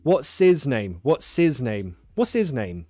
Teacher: you have the option you can drop the h